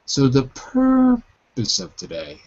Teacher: it's always this kind of rising falling tone so the purpose of today and it falls on of today